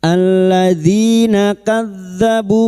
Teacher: kasrah bertemu ya sukun dua harakat mad thobi'i.